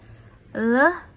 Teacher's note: Le is a lateral lateral avelar voice. So le are sound where the air is escape around the side of the tongue.